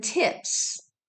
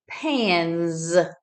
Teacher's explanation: if suffix s follows an unvoiced consonant the S is unvoiced as in tips if suffix s follows a voiced consonant the S is voiced as in pans